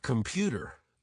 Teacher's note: the word computer typically stresses the second syllable